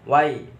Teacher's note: bacaan lin sebab fathah bertemu ya sukun